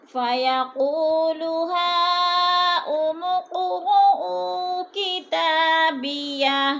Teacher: فَيَقُو کو تھوڑا سا کھینچیں گے، وہ مد ہے، ہا پہ مد متصل ہے، 4 الف مد ہے، 4 الف کے برابر کھینچ کر پڑھنا ہے.